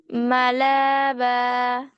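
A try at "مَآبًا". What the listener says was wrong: না, মালা না এটা। মা আ, হামজা। মা আ বা।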